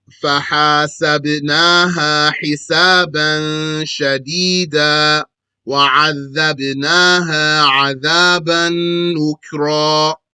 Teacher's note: From the middle of the throat come the ha and the ayn.